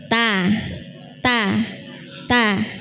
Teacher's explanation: Ujung lidah ketemu tempat tumbuh gigi seri atas. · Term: huruf ta